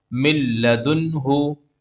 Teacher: नून साकिन के बाद में लाम आ रहा है, तो यहाँ पर भी इदगाम बिला गुन्ना होगा, मतलब गुन्ना नहीं करेंगे